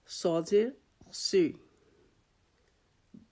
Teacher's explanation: زبان کی نوک سے ہم صاد کو ادا کریں گے لیکن اس کو بھی ہم موٹا ادا کریں گے، تو اس کو بھی حروف مستعلیہ میں سے کہا جاتا ہے.